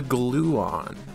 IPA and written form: ˈɡluːɒn (gluon)